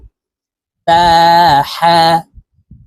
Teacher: হা হরফ হলকের মধ্যখান থেকে উচ্চারণ করব